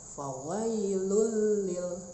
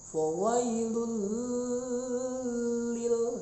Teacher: Fawailun il sholin, ya, ada tanwin pada huruf lam, fawailun, ketemu lam lagi. Nah, itu dibacanya dimasukkan fawailul lil, tapi tidak pakai dengung, jadi tidak boleh ditahan. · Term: idgham bila gunnah